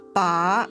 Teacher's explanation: The second's rising.